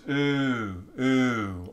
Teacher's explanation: we mid-centralize the ooh sound so that it becomes ooh ooh almost schwa ifying it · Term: mid-centralization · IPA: u̽